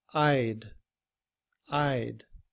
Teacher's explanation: In reduced form, we drop the sound of the H, and combined with I, we would just say I'd. I'd. However, when we speak, we don't blow the air after the sound of the word D.